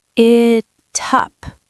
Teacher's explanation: Now the T in it moves to the U in up.